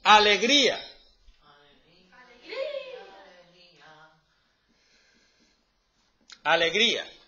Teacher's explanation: el golpe de voz va en la I. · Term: hiato